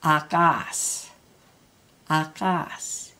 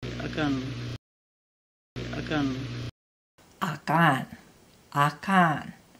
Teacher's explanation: So with no stress mark over the A, you're going to say the next syllable louder.